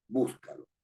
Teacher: estoy poniendo el énfasis el estrés el acento esto significa acento estoy poniendo el acento en la anterior a la penúltima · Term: esdrújulas